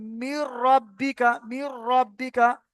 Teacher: নুন সাকিন অথবা তানবিনের পরে যদি লাম আর র আসে তাহলে ঈদগামে বেলা গুন্না, বেলা গুন্না মানে গুন্না হবে না, মিলিয়ে পড়তে হবে, গুন্না হবে না।